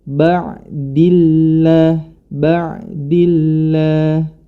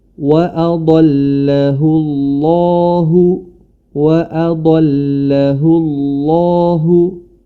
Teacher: Sebagaimana contoh pada kata mim ba'dillah, mim ba'di, huruf dal berharokat kasroh, maka lafdzul jalalah atau huruf lamnya dibaca tipis